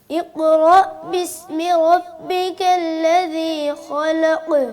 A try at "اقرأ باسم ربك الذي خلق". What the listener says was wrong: अभी काफ में थोड़ा सी तवज्जो देने की ज़रूरत है, हम आगे बढ़ते हैं।